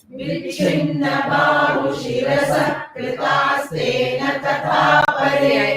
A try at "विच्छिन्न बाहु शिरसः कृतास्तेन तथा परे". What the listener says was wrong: I could hear the chinna, the mahaprana, but vichinna, the ich is very important. Vichinna. Don't roll it.